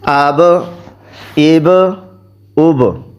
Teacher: اس کو پڑھتے ہوئے دونوں ہونٹوں کو ملا کے فوراً چھوڑ دیتے ہیں، تو یہ ہوتا ہے قلقلہ۔ جب ان دونوں کو ہونٹوں کو فوراً چھوڑ دیں گے تو یہ قلقلہ اس کا ادا ہو جائے گا۔